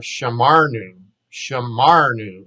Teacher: Accent is on the ma